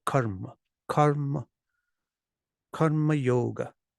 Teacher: the technical thing is just that the first uh lasts longer than usual